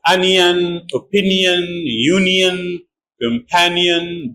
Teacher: whenever we have n i o n at the end of words I is pronounced y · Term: y sound